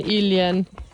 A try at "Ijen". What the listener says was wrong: Ijen. There's no L.